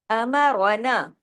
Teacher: میں را کو ہیوی کریں گے زبر کی وجہ سے